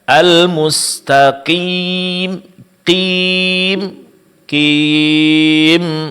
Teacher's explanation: terlalu berlebihan memberikan penekanan pada tengah-tengah lidah di saat mengucapkan huruf mad ya